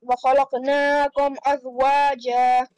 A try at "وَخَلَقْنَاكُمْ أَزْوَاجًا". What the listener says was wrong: Noon will be stretched only for 1 second, no more than that. Qaf will have a qalqla on it.